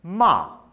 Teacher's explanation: if I say ma the fourth tone I'm scolding someone